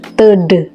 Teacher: ujung lidah menekan rapat pada gigi atas bagian dalam, sehingga udara yang dihembuskan dari paru-paru terhambat untuk beberapa saat. Ujung lidah yang menekan rapat pada gigi atas itu kemudian secara tiba-tiba dilepaskan. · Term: konsonan hambat letup apikodental